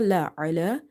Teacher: Lam we have to read by stretching up to one alif because of vertical harka.